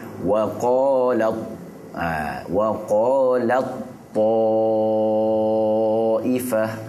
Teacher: Yang ta ni dah tak bunyi dah. Dia idgham dan masukkan pada ta terus. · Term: idgham mutajanisain